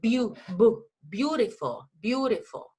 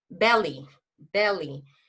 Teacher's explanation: La B larga en inglés es bilabial, es bilabial. Significa que tú dices beautiful, beautiful.